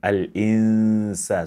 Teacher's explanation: And we have two noon here. This noon is not counted because it is merged it is hidden in the sound of sin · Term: silent noon